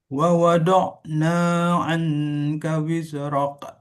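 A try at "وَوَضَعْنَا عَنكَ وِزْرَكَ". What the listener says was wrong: Wiz tidak perlu dipantulkan, dia harus jelas seperti kita bilang huruf Z. Wa wada'na anka wizrak. Nah, bukan kof tapi K di tipis saja.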